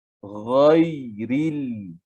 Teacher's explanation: Masuk kepada ya sukun, sifat lin pada ya tersebut, lembutkan dia. Ghairil. Ril nipis.